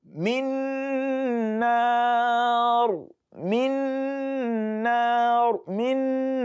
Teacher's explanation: That is idgham naqis too. You are inserting the nun that is carrying sukun into the next nun.